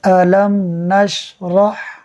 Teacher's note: میم ساکن کے بعد نون حرف با اور میم کے علاوہ ہے، اظہار شفوی ہوگا، یعنی ہم میم ساکن میں غنہ نہیں کریں گے